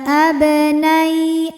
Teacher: ya sukun yang sebelumnya baris fathah maka dibacanya lembut